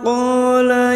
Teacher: fathah diikuti alif 2 harokat. Qala ya alif kecil di atas 2 harokat mat tabi'i sama-sama 2 harokat kita panjangkan.